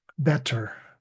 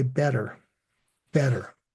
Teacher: you might hear that R sound very strongly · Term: English R